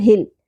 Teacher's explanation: ہل قلقلہ نہیں کرنا لام ساکن پہ. ہل نہیں پڑھنا.